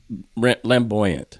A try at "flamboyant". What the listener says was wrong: Flamboyant, as in roasted lamb, or flamboyant? Did you actually say lamboyant?